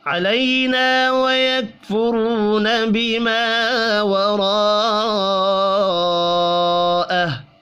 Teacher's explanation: علی یا لین ہے، نا الف مدہ ہے، الف مدہ کو ایک الف کے برابر کھینچ کر پڑھیں گے۔